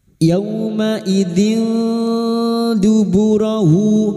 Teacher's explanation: Ikfa hakiki. Kita samarkan bunyi kasrah tanwin dan mendengung selama 3 harakat